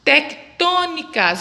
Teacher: A sílaba tônica é a antepenúltima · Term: Proparoxítona